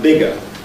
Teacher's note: in a word like bigger, the g there is fully voiced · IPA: [ˈb̥ɪgə]